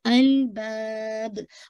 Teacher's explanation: پھر اولل نام پہ آپ نے باؤنس نہیں کرنا ہے، الباب، با کو اسٹریچ کریے گا ٹو کاؤنٹ ، یعنی آپ نے اس کو 2 4 6 پڑھ سکتے